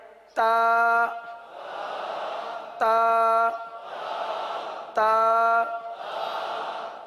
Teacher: जबान की नोक और ऊपर के दांतों की जड़ से अदा होते हैं